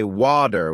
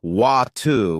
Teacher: In American English, people might say water with a D sound, while in British English, it's often water with a T sound.